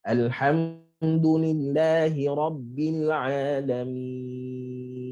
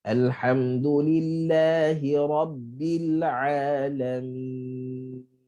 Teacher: nun tu kita kena bagi lepasan suara tetapi jangan panjang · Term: nun bainiyah